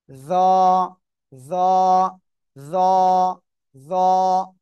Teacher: জিহ্বার আগা, উপরে দুই দাঁতের আগায় লাগান